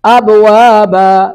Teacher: جھٹکا لگائیں گے، تأتون افواجا وفتحت السماء فکانت ابوابا، ماں پر مد متصل ہے، 3 الف کھینچیں گے